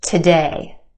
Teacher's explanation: our second syllable has the stressed or emphasized vowel sound